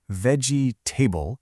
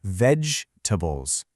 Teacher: See, we don't really say veggie table. That middle sound gets squished into a quick little uh sound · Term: Reducing unstressed syllables